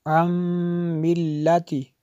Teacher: نون ساکن کے بعد میم ہے، تو یہاں پہ بھی ادغام ہوگا، اس لیے میں نے غنہ کیا